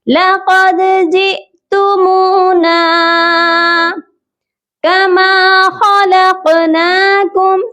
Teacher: क़ाफ जो है हरूफ क़लक़ला है और साकिन हो रहा है, इसीलिए हम यहाँ पर क़लक़ला करेंगे · क़ाफ को मोटा पढ़ेंगे और दाल जो है हरूफ क़लक़ला है, इस पर क़लक़ला करेंगे